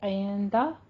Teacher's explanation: عندہ میں اخفا حقیقی ہے، غنہ کریں گے